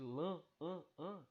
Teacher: Esse N funciona simplesmente como um articulador para nasalizar o som do A. Então, esse som de lã, an, nasalizado, ele é proporcionado pela letra N